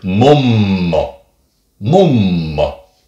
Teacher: with M, it's a little bit more interesting because there you don't have that much of a pause as you do just elongate the sound of mm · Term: long sound